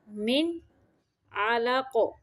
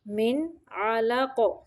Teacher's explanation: من پہ نون کو صرف ظاہر کرنا ہے، یہاں پہ اظہار حقیقی ہے یعنی اظہار کا قاعدہ ہے، من علق۔